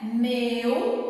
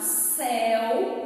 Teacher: Meu, o som é fechado, céu, o som é aberto